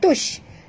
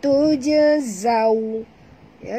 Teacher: Tujazawna illa ya, tuj mati pada jim ya, jadi kita kena lantunkan dia qalqalah sughra. Tuj bukan tush tapi tujazaw ya.